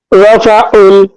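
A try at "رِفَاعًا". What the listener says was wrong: আইনটা একটু মোটা হবে। রফাউন,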